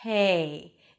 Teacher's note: when you're whispering a B sound, you're actually pronouncing a P sound